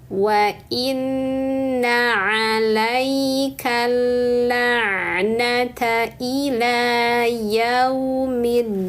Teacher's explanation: Pastikan dalnya ditahan dulu karena syiddah ya.